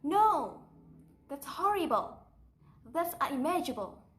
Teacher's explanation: There's a sharp rise before the fall. Even if you have only one syllable, you need to go up and then down. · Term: wavering intonation